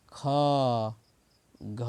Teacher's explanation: दूसरा और चौथा ख घ मतलब ज्यादा हवा प्राण आयु निकलता है मुख से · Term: महाप्राण